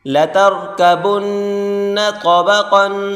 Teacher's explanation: تو کو موٹا کر کے پڑھیں گے اور قاف کو بھی